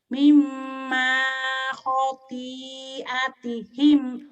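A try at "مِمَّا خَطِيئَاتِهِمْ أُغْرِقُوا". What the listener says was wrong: Khoti. Kedengarannya khopi ya. Khoti.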